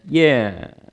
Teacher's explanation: If you had a musical pitch, you'd see the note would fall.